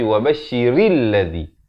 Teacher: Tapi wabashiril ladzi. Ra baris bawah bunyi ri. Bukan bunyi re. Ya? Jadi bertemu lam jadi ril.